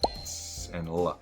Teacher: The S sound and the L sound both happen on the alvolar ridge, which is that little bumpy area behind your front top teeth.